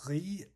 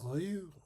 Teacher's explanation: The riz is the unrounded vowel and the rue is the rounded vowel.